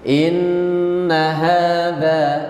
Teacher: Perhatikan di sini, inna pendek, tidak boleh inna hadza. Nah, innanya pendek, ha dan dza panjangnya sama.